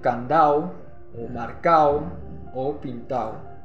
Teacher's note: eliminación de la consonante D ante una posición intervocálica. Tal es el caso de candao o marcao o pintao.